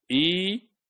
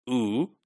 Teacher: In E, it is the front part, and the U, it is the back part. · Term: part of the tongue